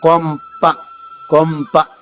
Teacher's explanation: తర్వాత సున్నా ఉంటుంది కానీ దాన్ని పలకాలంటే మనం పెదవలు కలుపుతాం కొంప కొంప పెదవలు కలగకుండా కొంప చెప్పలేం · పెదవులు కలగకుండా కొంప చెప్పలేము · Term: అనుస్వరం